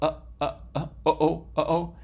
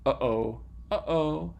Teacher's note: so you know this is a glottal stop which means that you close off your vocal folds briefly you stop the flow of air there for a little bit of time and then you open them again